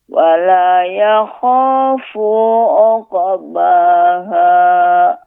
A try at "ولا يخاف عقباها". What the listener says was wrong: Sekali lagi Ibu, wala yakhafu. Ya, pengucapan fu ada matnya, ya, ada panjangnya. Ya khafu, yang benar fu-nya pendek Ibu. Wala yakhafu uqbaha. Ya, perhatikan ketika membaca qalqalah pada qaf ya.